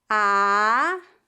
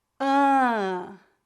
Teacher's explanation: Note que a vogal oral a é bem aberta enquanto a vogal nasal ã é um pouco mais fechada e tem um som nasalizado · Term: vogal nasal an